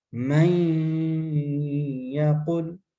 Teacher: ناقص کا مطلب کیا تھا کہ نون ساکن کے بعد آدھی نون ساکن کی بھی آواز آئے گی، یا کی بھی آواز آئے گی، وہ نہ ہوگا. من یقل، اب ہلکی سی نون کی بھی آواز ہے اور یا کی آواز ہے